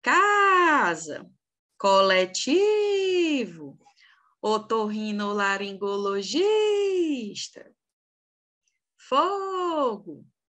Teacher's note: nenhum aqui é atômico porque se fossem ela seria oxítona né as nossas sílabas tônicas são as penúltimas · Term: paroxítona